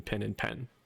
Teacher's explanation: The I and the eh before nasals for speakers of English in the southern United States, that distinction is gone. They're both just I. · i don't distinguish between pin and pen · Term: southern accent